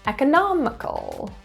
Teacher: Notice how quickly the other syllables are pronounced. The stress is in the third syllable.